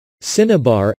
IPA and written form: ˈsɪnəbɑːr (Cinnabar)